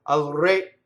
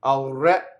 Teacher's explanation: So the other thing is, re is closed when it means the king. So you're saying to the king, right? Right? The musical note in solfege is a re, open.